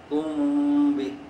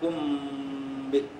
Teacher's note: تو کم یعنی میم کے وقت ہونٹ نہ دبائیں اور با پر دبائیں · یہ ہونٹوں کا مخرج، میم کا مخرج ہے۔ کم بھی، چونکہ میم کے بعد ساکن کے بعد با ہے تو میم کو مخرج میں چھپائیں گے۔